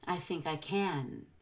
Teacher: Can will actually be the loudest word in the sentence. Make sure it has a full short A.